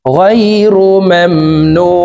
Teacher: নু 3 আলিফ টেনে নুনকে সাকিন করব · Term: আরজি